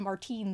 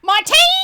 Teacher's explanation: I instead put all of the emphasis on the second syllable and called him Martine